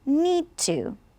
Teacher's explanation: D and T are very similar so we'll just pronounce it one time